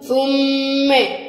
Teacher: ثم الثاء من الحروف اللي بنطلع فيها طرف اللسان ، والميم حركتين لأن عليها شد، التاء هتخفي النون، ثم أنتم،